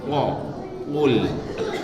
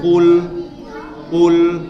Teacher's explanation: Qaf itu dari pangkal tenggorokan.